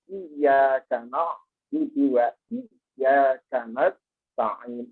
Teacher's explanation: ada tasdidnya yang harusnya ditekankan iya karena dua iya